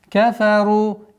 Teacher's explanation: Твердое произношение ра после двух мягких звуков.